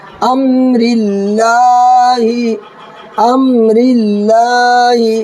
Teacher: اللہ کے لام سے پہلے را کے نیچے زیر ہے اس لیے اللہ کے لام کو باریک کر کے پڑھیں گے